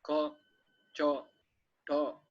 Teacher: usualmente como nosotros vemos A, la pronunciamos como A, pero en bengalí es O